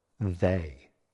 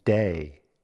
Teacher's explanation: Many Learners replace the voice TH with sounds like /d/ or /z/.